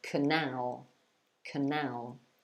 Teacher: I guess so, but just be careful of the stress there, because when you say that word, C-A-N-A-L, you have to stress the second syllable. So you say canal, canal.